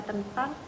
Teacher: Bunyi nasal pada tentang diucapkan apikodental karena bunyi yang mengikutinya yaitu huruf T. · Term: asimilasi fonetis